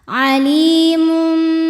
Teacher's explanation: Li mad tabi'i zahiri karena ada ya sukun didahului kasrah, maka lam panjang 2 harokat